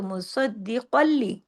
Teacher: قاف جا کے لام سے ملے گا لیکن قاف ہیوی ہی رہے گا تشدید کی وجہ سے